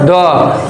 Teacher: द का उच्चारण है दंत यानी दांत